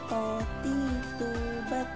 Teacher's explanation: Huruf to tidak mengalirkan nafas dan diucapkan dengan suara menebal. Ketika melafalkan to dalam keadaan mati, suaranya terdengar memantul.